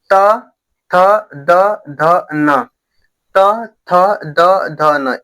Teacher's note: ये जो जीभ है ये दांतों पे क्या हो रही है? टक्कर मार रही है